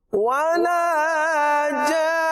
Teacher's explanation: ولا جان مد ہے اور مد لازم ہے اور اسے زیادہ کھینچنا ہوگا اور آخر میں نون مشدد ہے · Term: غنہ